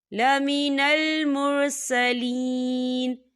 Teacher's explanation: یہاں پر یا مدہ ہو رہا ہے، یا ساکن سے پہلے زیر ہے، تو ہم اسے 2 یا 3 حرکت کی بابر کھینچ کے پڑھیں گے.